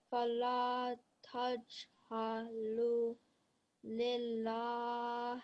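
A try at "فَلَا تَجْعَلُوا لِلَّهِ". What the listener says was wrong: Alu, vowel, madda here, okay? Alu needs to be prolonged for 2 seconds.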